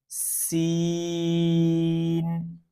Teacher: سین میں بھی سی ٹی کی آواز نکالنی ہے، اور اس کو بھی تھوڑا سختی سے پڑھنا ہے۔